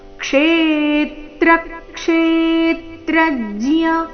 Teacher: ಮೊದಲನೇ ನಾಲ್ಕು ಅಕ್ಷರಗಳ ಮೇಲೆ ಆಘಾತ ಕ್ಷೇ ದೀರ್ಘ ಹೇಳ್ಬೇಕು